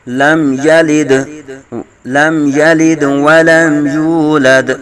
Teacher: دال ساکن میں کلکلا کریں گے